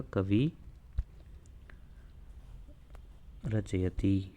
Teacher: जैसे उदाहरण देखिए इसका, कवि रचयति विसर्ग से पहले ई आ रहा है स्वर और विसर्ग के बाद र आ रहा है, तो विसर्ग का लोप हो जाएगा और जो ई है वो दीर्घ हो जाएगा।